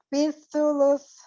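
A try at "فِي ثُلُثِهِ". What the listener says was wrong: Ini sa-nya salah semua. Ayo, ulang lagi. Su. Ini masih sin, Yang di lusnya benar, yang di depannya salah.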